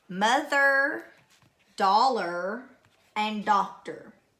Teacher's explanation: I hear that R influence vowel sound at the end of each word · each of these final syllables are going to be unaccented, just like before.